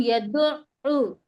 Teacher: اب یا کے اوپر زبر کی حرکت ہے اور دال پہ بھی پیش کی حرکت ہے تو ہم اس کو جلدی پڑھیں گے، بالکل نہیں کھینچیں گے، لیکن عین کے اوپر تشدید لگی ہے تو ہم کیا کریں گے، 2 بار پڑھیں گے، ایک بار پہلے والے حرف سے ملا کر پڑھیں گے